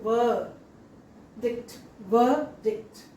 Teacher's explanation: In spelling you see letter R, but in pronunciation we don't see the symbol for R. So R need not be pronounced there.